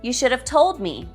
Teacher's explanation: both should and have are weak here